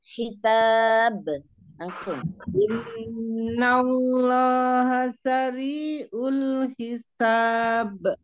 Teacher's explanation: kolkolnya harusnya hisab langsung kita jangan jangan ada jeda